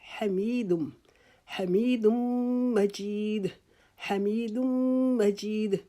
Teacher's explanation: مجید جو ہے اس کی میم کے اوپر شد ہے، میم مشدد کا غنہ کریں گے یعنی کہ میم کے اوپر ایک الف کے جتنا رکیں گے